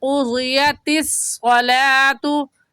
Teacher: ता बारीक हरूफ में से है तो होंठ फैला लेंगे